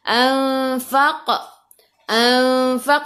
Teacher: ikhfa hakiki dengung dua harakat, bawa ke sisi huruf fa. Faq, faq, masuk ke dalam qaf, qaf ada sukun, kena melantun, lantunannya kecil, qalqalah sughra.